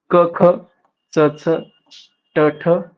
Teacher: जिन व्यंजनों के उच्चारण में हवा गले कंठ से निकलने पर स्वर तंत्रियों में कंपन नहीं होता, उसे अघोष म्हणजे घर्षण होत नाही असं, अघोष, अघर्षित, अघोष, उन व्यंजनों को अघोष व्यंजन कहा जाता है।